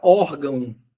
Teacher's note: a palavra órgão, a sílaba tônica é o or, não é o gão.